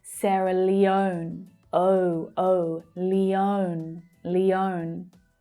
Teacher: It's the O as in go vowel sound. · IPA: /əʊ/